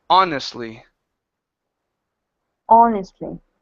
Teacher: with honestly we don't need to pronounce the h